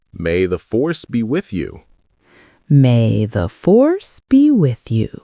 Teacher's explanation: Watch the emphasis on force and the weak form of be with you.